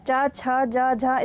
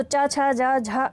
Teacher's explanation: चा, छा, जा, झा स्पर्श संघर्षी व्यंजन है